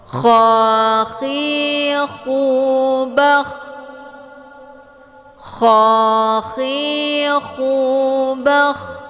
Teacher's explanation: Kemudian posisi lidah bagian belakang itu naik ke langit-langit, sedangkan ujung lidahnya yang bagian depan dia tetap merendah. Jadi bunyi kha ini dia suaranya kotor seperti bercampur air. Nah, kalau untuk diumpamakan itu seperti kita masukkan air ke tenggorokan terus kita kayak kumur-kumur gitu ya, kayak orang mau ngorok gitu gitu. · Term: huruf kha